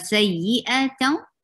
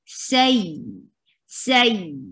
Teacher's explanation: Nabar is a jump of sound. You give little jump on this sound of ya. Say, it shouldn't go smooth.